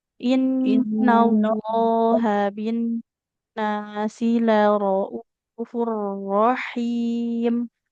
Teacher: Jadi lafaz Allah itu dia tebal. Tebalnya tapi yang hanya terangkat tengah lidah saja. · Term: lamnya tebal